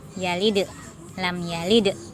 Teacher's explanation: Tidak boleh dilipat ke dalam. Kemudian dalam membaca dal sukun, karena ini huruf qalqalah, maka harus mantul. Lam yalid, dal sukunnya mantul jadi yalid, lam yalid.